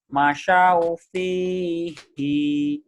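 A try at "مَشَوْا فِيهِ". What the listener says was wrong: pendek, masyau fihi,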